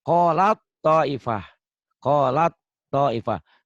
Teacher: Taknya bertemu dengan to, berarti taknya nggak dibaca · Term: huruf mati